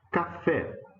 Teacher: Oxítona terminada em E, nesse caso um E aberto